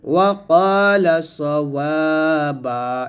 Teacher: এখানে সদ উচ্চারণ করার সময় সতর্ক থাকবেন যেন সিন না হয়ে যায়